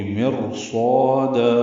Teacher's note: را ساکن کے بعد حروف مستعلیہ میں سے صاد آ گیا ہے، اب را پر ہوگی. آگے صاد آ رہا ہے را ساکن کے بعد، اس وجہ سے را پر ہوگی. · صاد پر ہے، اس کا الف مدہ بھی پر ہے